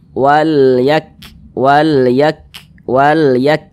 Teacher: huruf kaf ini dia merupakan salah satu huruf yang memiliki sifat hames. Nah, jadi ketika kita ucapkan ya maka ada nafas yang mengalir ketika kita mengucapkannya.